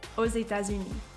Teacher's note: there are two required liaisons which are found in aux États-Unis